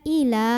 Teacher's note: Karena ada alif, sebelumnya fathah. Maka dibaca panjang 2 harokat kalau berhenti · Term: mad tabi'i